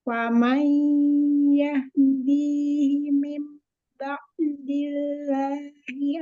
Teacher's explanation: nun sukun ketemu huruf ya idgham biguna huruf nunnya masuk ke ya